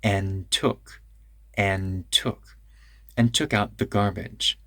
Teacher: and took, we make that D a little longer.